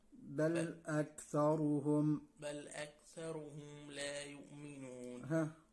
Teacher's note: الراء برضو عايزة شوية تفخيم